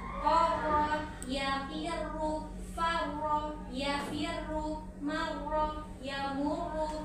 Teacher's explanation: Tasydid pada huruf ro. Hati-hati jangan berlebihan menggetarkan ujung lidahnya. Jangan berlebihan, hanya 2 getaran ya.